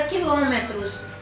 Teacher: a palavra quilômetros onde ló é a sílaba mais forte e é também a antepenúltima sílaba dessa palavra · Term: proparoxítona